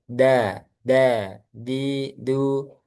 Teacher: Dia juga ee makhrajnya ujung lidah ketemu pangkal gigi seri atas. · Nah, bedanya dengan ta, huruf dal dia tidak keluar udara